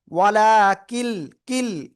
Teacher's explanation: কাফ লাম জের কিল, নুন সাকিনের পরে ইদগামে বেলা গুন্নার অক্ষর র লামের একটা অক্ষর লাম আসছে, আমরা গুন্না ছাড়া মিলিয়ে পড়বো। ওয়ালা কিল, কিল এই যে মিলানো।